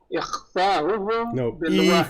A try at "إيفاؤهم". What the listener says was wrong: إيفاء not إخفاء، إيفاؤه.